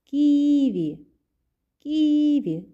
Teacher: наголос падає на першому складі